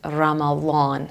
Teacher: they pronounce it something between D and Z